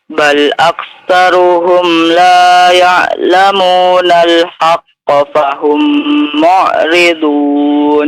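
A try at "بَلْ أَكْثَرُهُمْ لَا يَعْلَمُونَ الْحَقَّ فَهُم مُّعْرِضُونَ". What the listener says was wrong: Iya cukup. Barakallah ya.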